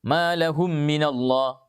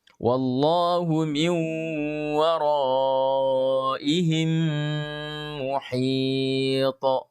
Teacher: maka mim yang pertama diidgham ke dalam mim yang kedua disertai dengung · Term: idgham mimi